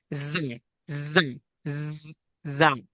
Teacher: और जब जा अदा करेंगे तो हमारी जबान दोनों दांतों के अंदर ही रहेगी, बाहर को नहीं आएगी, और सीटी की आवाज पैदा होगी।